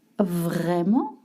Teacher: you want to put the stress on vrai. And I know vrai is not very easy to say, so you have to practice that R sound.